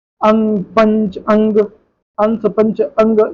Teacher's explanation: अनुस्वार एक व्यंजन ध्वनि, उसके उच्चारण से में नाक से अधिक सांस निकलती है और मुख से कम